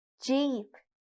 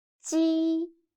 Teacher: 鸡 sounds a little bit like the first sound of Jeep. But when pronouncing 鸡, your tongue should be more flat, and you need to stretch your mouth to both sides. 鸡. Listen to me carefully and feel the difference.